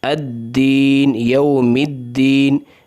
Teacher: یہاں پر ادغام ہو رہا ہے، لام ال کا ادغام ہو رہا ہے ، یعنی لام ال کے بعد حروف شمسیہ میں سے کوئی